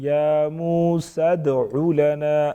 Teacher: یعنی دال کو پراپر وضاحت کے ساتھ ادا کریں گے، آواز میں تھوڑی سی جنبش پیدا ہوگی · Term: قلقلہ